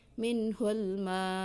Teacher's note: Jadi mutlak harus berhenti, jadi hamzahnya disukunkan. Jadi ada kayak hentakan, tapi tidak terlalu besar